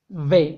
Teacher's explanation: V, acuérdate que esta V sí es diferente a la del español, es labio dental, es decir, labios inferiores con dientes superiores.